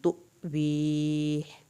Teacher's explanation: تو پہ جھٹکا لگے گا کیونکہ حمزہ پہ جاز